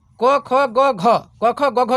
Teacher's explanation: क का उच्चारण है कंठ से